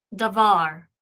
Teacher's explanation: tone syllable so this is the accented syllable tone syllable and the da would be the pre-tone syllable the syllable before the tone syllable